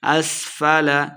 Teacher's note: سین پہ سیٹی کی آواز آئے گی